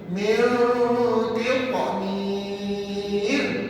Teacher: Kena ada bunyi qalqalah. Ta tu mati kena melantun pada dia.